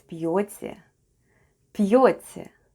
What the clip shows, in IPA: p'yotye